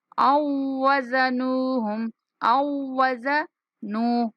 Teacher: हमजा को वाव मुशद्दद के साथ मिलाएंगे